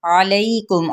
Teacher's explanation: नून की हरकत को लंबा नहीं करेंगे। अलैकुम, आइन को वस्ते खल्क से अदा करते हुए लई पे या लीन का कायदा हो रहा है